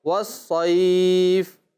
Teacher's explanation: یا لین کے بعد جب حرف کوئی آئے گا ایسا جو ساکن ہو رہا ہوگا تو وہاں پر اسے کھینچ کر پڑھیں گے